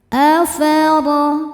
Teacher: Huruf ra dibaca secara tafkhim karena ra berharokat fathah. Cara bacanya ra dibaca dengan tebal.